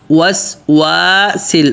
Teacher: اب یہ دو واؤں ہیں وسواس میں، تو ان دونوں واؤں پہ ہونٹ کو گول کرنا ہے، وسواسل، واؤ کو پتلا بھی بولنا ہے اور ہونٹوں کو گول کرنا ہے۔